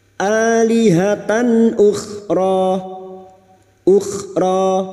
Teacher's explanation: fathah tanwin dibaca jelas tanpa mendengung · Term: Idhar halq